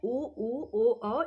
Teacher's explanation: वे स्वर जिनका उच्चारण करते समय आप ओष्ठ गोल हो जाते हैं अर्थात वृत्त जैसी आकृति ग्रहण कर लेते हैं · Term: वर्तुल स्वर